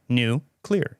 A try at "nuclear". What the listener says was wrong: But say it without breaking.